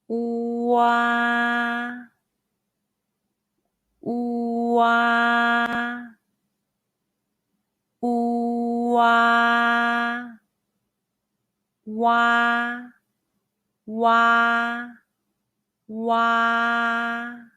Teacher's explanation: It's like the WA in the English word water, but over-exaggerate the ah by opening your mouth as wide as possible. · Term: the final wa